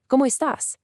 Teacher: Make sure to match the natural rising intonation of a question right at the end there.